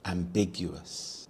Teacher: The stress is on the second syllable big